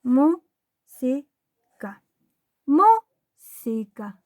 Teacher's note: Esta palabra tampoco es aguda, ya que su golpe de voz está en la antepenúltima sílaba